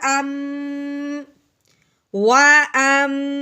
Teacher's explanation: دوسری ہم نے کیا کرنا ہے کہ میم کے اوپر شد آنے کی وجہ سے میم پہ غنہ کرنا ہے